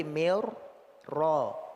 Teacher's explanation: Secara terucap ra-nya berubah menjadi dua, sehingga secara lafaz dia bertasydid. Ya. Walaupun secara tertulis dia juga ada tasydid, tapi nanti ada idgham yang dia tidak ada tanda tasydid secara tulisan.